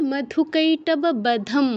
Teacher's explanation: তো তারা জাস্ট একটু লিখে নিন এখানে একটা অনুস্বার হবে আর অনুস্বার শেষে থাকলে ময় হসন্তর মত উচ্চারণ হয়